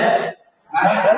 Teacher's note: Ada hamas sedikit, nafas mengalir.